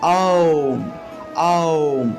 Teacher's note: আপনি মুখটা বড় থেকে ছোট করেন, উচ্চারণটা হবে আও আও, অর্থাৎ আ দিয়ে আরম্ভ করবেন। আ করলে আপনার মুখটা বড় হয় এবং এতে করে আপনার মুখ দিয়ে, অর্থাৎ একদম বড়, মুখটা বড় থেকে ছোট হলো, এতে করে আওমের উচ্চারণের যে প্রকৃত উচ্চারণটা বা স্পষ্ট যে উচ্চারণটা আছে সেই উচ্চারণটা হয়ে থাকে।